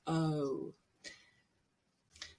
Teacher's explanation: it's a moving or changing vowel you changed the lips there not just o but oh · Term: rose